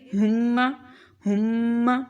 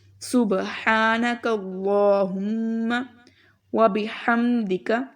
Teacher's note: میم کے اوپر شد ہے تو میم پر غنہ کریں گے